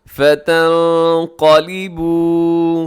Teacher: نون ساکن کے بعد قاف ہے، تو اب یہاں اخفا کیجیے گا